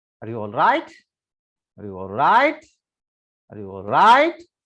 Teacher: So on the word, last word, there is a rising intonation.